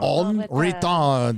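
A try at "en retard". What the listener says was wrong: No, you gotta say that D. It's a hard D.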